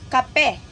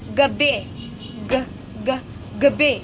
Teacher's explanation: kapag sinasabi natin ang mga tunog tulad ng K at G, doon sa likod ng bibig ginagawa ang tunog.